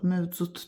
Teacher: Tələffüzdə D samiti T kimi tələffüz olunduğuna görə deməli kar samit də var. Yalnız qapalı saitlər işlənib.